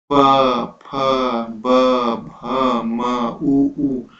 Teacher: इसे आप बोल कर देखिए, बोलिए प, फ, ब, भ, म, ऊ। तो आपके लिप्स में काफी हलचल होती है, ठीक है, लिप्स हिलते हैं, इसको हम बोलते हैं ओष्ठ। इसका उच्चारण स्थान जो होगा आपका ओष्ठ होगा, होंठ का प्रयोग होता है, इसलिए हम लोग इसको ओष्ठ्य वर्ण बोलते हैं, ठीक है।